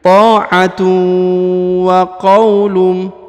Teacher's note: huruf harokat un ya, bertemu dengan mim, maka ditahan dan ditekan ya, dan didengungkan 2 harokat.